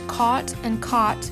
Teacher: there is typically little to no difference heard in the lowercase a phoneme and the open O phoneme. This causes words such as caught and caught to sound the same.